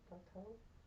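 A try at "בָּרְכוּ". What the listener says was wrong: What's that last vowel? Yeah, barchu.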